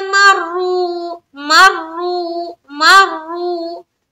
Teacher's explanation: वइदा मर्रू मर्रू मर्रू, मीम रा ज़बर मर रा वा पे शुरू, यहाँ पर वा मद्दा का कायदा है और रा को पुर रखते हुए खींचेंगे, वा मद्दा करेंगे